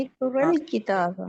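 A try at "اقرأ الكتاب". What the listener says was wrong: एक और आपने अलिफ हमजा के ऊपर जबर लगा दिया। साकिन है। एक और अल किताबा ऐसे होगा। भाई इकरा तो है, इकरा भी। अच्छा, इकरल किताबा कह रही हैं आप?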